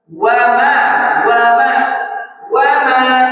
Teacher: Wa itu gak nempel bibir tapi membulatkan bibir.